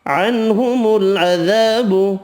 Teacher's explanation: نون کا اظہار ہوگا، الف مدہ ایک الف کی مقدار میں کھینچ کر پڑھیں گے